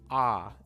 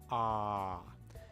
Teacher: the japanese sound is very low and back in the mouth